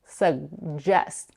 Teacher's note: Some people put the back of the tongue up for the g sound, but they don't release it, suggest. Many people, however, drop the first g and only pronounce the j sound, suggest.